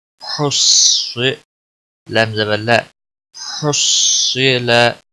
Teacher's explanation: ہا صاد پیش حس، صاد زیر سی، حس سی، لام زبر لا، حس سی لا۔ صاد کو موٹا پڑا جائے گا، حروف مستعالیہ میں سے